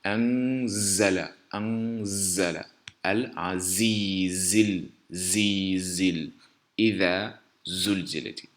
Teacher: La lettre qui suit, c'est la lettre Z qui se prononce avec une vibration sèche au bout de la langue qui s'appuie au palais, contre le palais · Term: sifflement